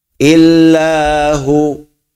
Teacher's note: Allah ditafkhim dan tebal bunyinya